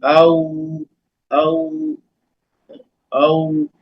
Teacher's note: वाव को दोनों होठों को गोल करने से अदा करेंगे। औ, जैसे औ औ औ, दोनों होठ गोल हो जाएंगे वाव के अदायगी में।